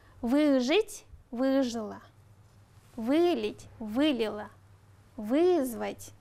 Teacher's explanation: приставка вы у глаголов ребята принимает ударение на себя